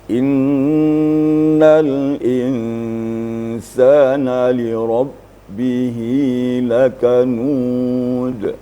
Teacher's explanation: suara terputus ya, tidak mengalir. Itu namanya syiddah.